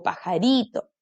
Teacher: pajarito penúltima sílaba igual sílaba tónica